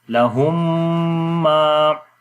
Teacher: میم ساکن کے بعد جب میم آ جائے تو ادغام شفوی ہوتا ہے، تو غنہ کریں گے